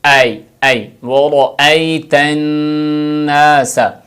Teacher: کا خیال رکھیں، اَيْ وَرَأَيْتَ لوگ پڑھتے ہیں وَرَأَيْتَ النَّاسَ، یعنی حمزہ کو صاف نہیں پڑھتے، را کو پر پڑھیں اور حمزہ کو صاف کریں